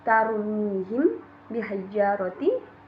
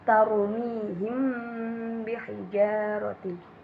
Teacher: ada mim sukun bertemu ba, dibaca harus dengan dengung. Tidak boleh dibaca dengan tarmihim bihijaratin, tapi harus tarmihim bihijaratin. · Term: ikhfa syafawi